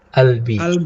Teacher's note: Kalau orang Mesir mengganti qaf dengan hamzah. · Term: Qaf jadi hamzah